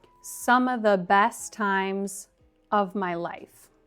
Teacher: And the same goes for the phrase in the sentence before, some of the. We can drop the v sound in of.